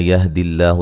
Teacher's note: لفظ اللہ کو باریک پڑھا جائے گا، اس سے پہلے زیر ہے اور یہ مد اصلی ہے۔